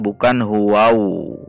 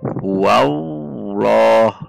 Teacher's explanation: Tidak perlu memonyongkan bibir. Namun masuk ke lam.